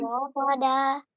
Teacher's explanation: Jadi tebal dan halus getarannya